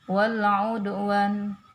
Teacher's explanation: lam sukun dibaca jelas, ya.